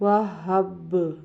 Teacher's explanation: آواز کو اس طرح ہلانا کہ جب اسے ساکن کریں گے وقف میں تو جس مخرج سے یہ با ادا ہو رہا ہے اسی مخرج سے جا کے آواز دوبارہ ٹکرائے، یعنی واہب آگے وقف وہب، تو با کو قلقلہ کریں گے۔